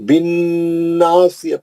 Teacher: مد اصلی سواد موٹا پڑھنا، تا مربوطہ کو ہا میں بدل کے روک دینا